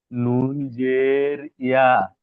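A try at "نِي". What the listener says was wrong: ইয়াজের, নুন জের ইয়া নয়, নুন ইয়াজের নি।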